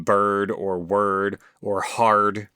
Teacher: And um they they should be very seamless basically like in bird or word or hard where you are exactly like I said you are flavoring the vowel with a little splash of R right there at the end